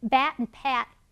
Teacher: the only difference is whether your vocal cords are vibrating when you say that word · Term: voicing